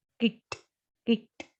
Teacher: So when the word ends with a voiceless consonant, and for that past tense we have to pronounce with a t sound.